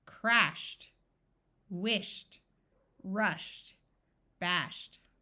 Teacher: Ed sounds like the letter T after words that end in the sound of sh.